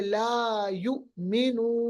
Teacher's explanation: हमजा पे जब भी आप जज्म देखेंगे, सुकून देखेंगे, इस पे होता है झटका। झटका मतलब झटका। आवाज को रोकना।